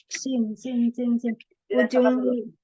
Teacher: Huruf sin itu ujung lidah hampir bertemu dengan gigi seri bagian bawah.